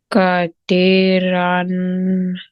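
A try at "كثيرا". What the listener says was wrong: kati. It's tha. Kasi.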